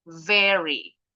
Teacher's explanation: Huruf V itu pita suara kita bergetar